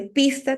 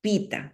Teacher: está omitiendo la s en posición de coda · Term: omisión de coda silábica